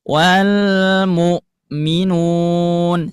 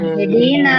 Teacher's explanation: Hamzah ketika sukun pita suaranya tertutup dan ha ketika sukun pita suaranya terbuka.